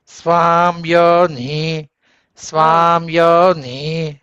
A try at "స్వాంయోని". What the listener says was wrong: మీరు అక్కడ పెదాలు కలపవాకండి. స్వాంయోని అపి గచ్చత స్వాం పెదవులు కలపకూడదు, సున్నా రావాలి.